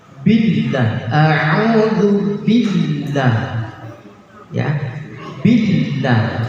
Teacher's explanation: billah itu ketika menyebut alif lam, namanya alif lam jalalah, itu kalimatnya tafkhim, tebal. Billah, a'udzu billah, ya, billah, tebal.